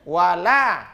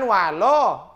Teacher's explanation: Perhatikan betul, jangan sampai merubah huruf sebelum-sebelumnya. Nah, huruf lamnya tetap la, wala. Jangan walo, tidak.